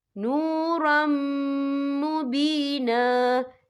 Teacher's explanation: یہ دیکھیں نورم، را کے پر تنوین ہے، تنوین کے بعد جو ہے میم آ رہا ہے، اور میم جو ہے حروف یرملون میں سے ہے، تو یہاں پر ادغام ہوگا، تو ہم اسے غننے کے ساتھ پڑھیں گے.